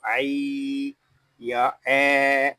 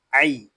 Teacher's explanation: یہاں یا لین ہو رہا ہے، اس کو کھینچ کر نہیں پڑھیں گے، اس کو عی یا اے ایسے نہیں پڑھیں گے، اس کو پڑھیں گے عی۔